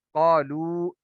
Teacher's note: قاف حرف مستعلیہ ہے، اس کو ہم پر کر کے پڑھیں گے، موٹا کر کے پڑھیں گے